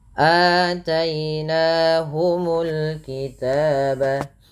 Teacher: Dan pada lafal ataina di sini ada hamzah berharakat fathah bertemu dengan huruf mad berupa alif. Panjangnya sendiri untuk mad badal adalah 2 harakat.